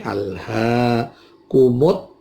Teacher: ada al ta'rif ketemu ta namanya al syamsiyah, maka kumul menjadi kumut ya